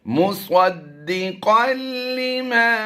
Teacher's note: हमने तनवीन के बाद हरफ लाम की मशक की है कि यहाँ पर इदगाम का कायदा तो होता है लेकिन गुन्ना नहीं होता